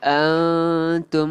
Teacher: Antum nun mati bertemu ta. Ni nun mati bertemu ta. Ikhfa hakiki. Dengungkan. Kita tak baca jelas tapi kita bacanya dengung. dengung. A-N-G.